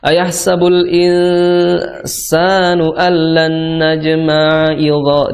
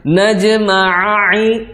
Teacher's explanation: Ain yang pertama bunyi, ain yang kedua berubah jadi hamzah.